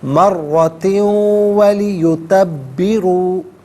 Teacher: واو کی آواز کو غنّے کے ساتھ ادا کریں گے